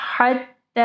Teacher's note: ہا کو واضح پڑھنا ہے، ٹھیک ہے، گلے کے درمیانی حصے سے